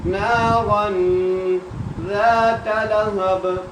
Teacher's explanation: آپ نے یہاں پر خیال رکھنا ہے ذال کو ذا میں مکس نہیں کرنا, مکس کریں گے تو غلط ہو جائے گا. ذات لہب, با پہ قلقلہ کرنا ہے کیونکہ با کو ہم نے وقف کی صورت میں کیا کر دیا, سائلنٹ · ذا کو کیوں کھینچ رہے ہیں, کیونکہ ذا کے ساتھ الف مد آ گئی. آپ نے یہاں پر خیال رکھنا ہے ذال کو ذا میں مکس نہیں کرنا, مکس کریں گے تو غلط ہو جائے گا.